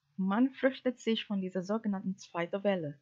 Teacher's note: The sentence is "Man fürchtet sich von dieser sogenannten zweiten Welle." This sentence has only one intonation phrases and the stressed word is man, which should not be stressed. The final intonation is terminal cadence.